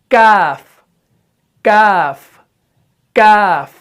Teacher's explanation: زبان کا جو پچھلا والا حصہ ہے یہ اٹھ کر سخت تالو سے لگتا ہے۔